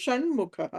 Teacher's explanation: సంధి ఇది సో అనునాసిక సంధిలో మనకి ఆ వర్గీయం క తర్వాత అంటే వర్గీయ వ్యంజనం తర్వాత మ అన్నది పంచమాక్షరం వచ్చింది కాబట్టి ఆ ట వర్గంలోని పంచమాక్షరము వస్తుంది కాబట్టి షణ్ముఖః అయింది